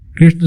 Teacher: कृष्ण शब्द में कृ पर बल दिया जाता है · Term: बलाघात